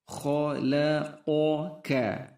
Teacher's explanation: Ini kha sama qa huruf tebal